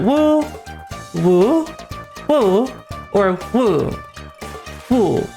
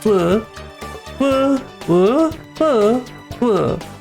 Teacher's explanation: So like flat, rising, wobble, fall is how it works. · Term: intonations in Mandarin